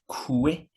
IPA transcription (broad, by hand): kwɪ